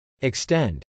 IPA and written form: ɪkstˈɛnd (extend)